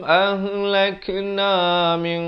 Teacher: ikhfa dibaca dengan tebal kerana qaf merupakan huruf isti'la. Dibacakan dengan 2 harakat.